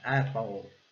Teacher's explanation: esse E com A, né, essa mistura de E com A, que a gente não pronuncia nem E nem A